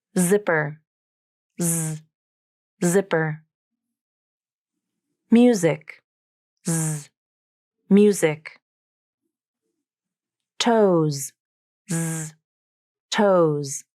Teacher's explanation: the vocal cords are vibrating as I say it, and there is a secondary vibration in the space where the air exits the mouth, between the tongue tip and back of the front teeth. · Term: Z consonant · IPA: /z/